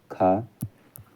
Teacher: स्पर्श व्यंजन कंठ ध्वनि अघोष और महाप्राण ध्वनि है। तो महाप्राण ध्वनि होती है वो हमारी होती है खा।